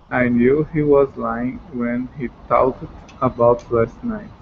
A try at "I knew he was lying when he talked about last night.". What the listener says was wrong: Good, okay? Talked. That's another one of those words that's the word talk, and then the t, talked.